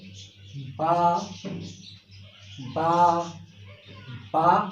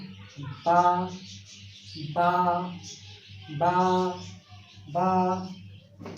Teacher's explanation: दोनों होठों का ये अंदरूनी किनारा है, जो तली वाला हिस्सा है, गीला हिस्सा है, इन ऊपर का और नीचे के दोनों होठों का जो गीले हिस्से है, ये जब आपस में मिलेंगे तो वहाँ से अदा होगा